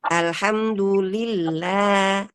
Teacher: huruf lam pada kata lillah Jangan dibaca tebal karena terdapat kasroh pada huruf sebelumnya